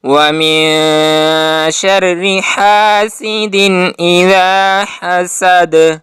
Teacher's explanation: اخفا میں آپ کی آواز مکمل طور پر آپ کے ناک میں نہیں جاتی ہے، جبکہ جب غنہ کریں گے تو آپ کی آواز مکمل طور پر کمپلیٹلی آپ کے نزل کیویٹی سے ادا ہوگی، آپ کے ناک سے ادا ہوگی۔